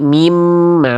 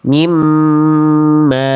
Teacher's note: Bunyi nun sukunnya belum diidghamkan, belum dileburkan. Nah, jadi bacaan yang tepat adalah langsung leburkan bunyiannya. Jangan sampai bersisa. Jangan dibaca min. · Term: idgam bigunah